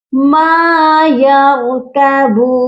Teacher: را موٹا ہوگا اور کبون با کے ساتھ واو مدہ ہے، اس کو ایک الف کی مقدار لمبا کر کے پڑھا جائے گا